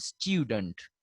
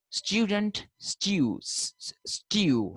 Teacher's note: There are certain words which are pronounced with a ya sound followed by the long u sound